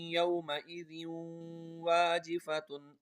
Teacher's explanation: دو زیر کے بعد واو آ رہا ہے تو یہاں پر بھی غنہ ہوگا